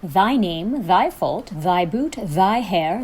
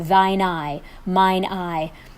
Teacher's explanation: a silent h an h that is pronounced like a vowel takes thine or mine instead of thy or my so that it runs together